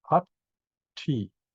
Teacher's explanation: Now in Pali and in Indian languages, you usually pronounce every letter. So Hat, there's a double T, 1 T belongs to the front, 1 T goes to the back.